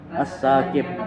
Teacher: qalqalah kubra karena ada huruf bu mati di akhir kalimat. Cara membacanya membalik membentuk huruf bu.